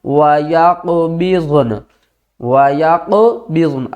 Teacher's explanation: اس زبر کو ڈراپ کریں گے، نون کو بھی ساکن کریں گے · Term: وقف